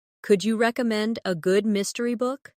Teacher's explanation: Notice how the stress naturally falls on recommend and mystery.